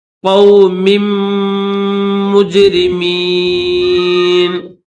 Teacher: تو اس کو پڑھنے کا طریقہ یہ ہے کہ یہ جو میم ہے نا پہلا، جس کے نیچے 2 زیر ہے، اس میم کو، پہلے والے میم کو دوسرے والے میم کے ساتھ ملا کر پڑھیں گے